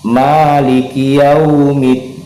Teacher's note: Pada riwayat Imam Hafs, Imam Hashim, torik Satibiyah, kita boleh baca 2 harokat atau qasar, boleh juga kita baca dengan tawasud pertengahan, boleh kita baca dengan tul, kita baca panjang 6 harokat.